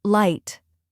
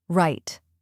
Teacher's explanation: Can you feel how your tongue stays up for L and curls slightly back for R?